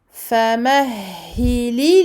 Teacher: Donc on donne au lam ici son temps de bayniyah, écoulement partiel du son.